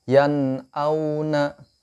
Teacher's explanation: Tidak kita baca dengung nunnya, bukan kita baca yang au atau dengung yang lainnya, tapi kita baca idhar jelas, nunnya terbaca jelas, yan auna.